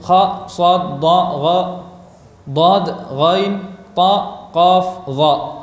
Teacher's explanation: Meningginya suara ketika pengucapan huruf-huruf isti'la.